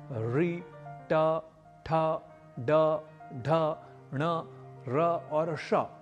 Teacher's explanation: मूर्धा अर्थात मुंह के अंदर के तालू और ऊपर के दांतों के पीछे सिर की तरफ का भाग, जिसे जीभ का अगला भाग री, ट, ठ, ड, ढ, ण, र और श इन वर्णों के उच्चारण करते समय उलटकर छूता है। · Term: मूर्धन्य